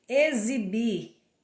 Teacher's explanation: Na palavra exibir, o X tem som de Z.